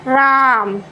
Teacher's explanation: जैसे राम अगर दूर में है तो थोड़ा हम उसके उच्चारण को लंबा ले जाएंगे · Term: प्लुप्त स्वर